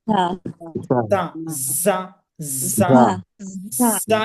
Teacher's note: সামনের নিচের দাঁতের আগা থেকে শীষ সহ পাতলাভাবে আদায় হয় স পাতলাভাবে উচ্চারণটা করতে হবে যা >> এরকম একটা বাতাস বের